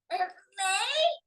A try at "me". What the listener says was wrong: Listen, remember, you did your may. We don't go up, we just go out. Me.